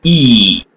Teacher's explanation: e is produced with the tongue as far forward and as high in the mouth as possible no friction is produced and the position of the lips is spread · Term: E vowel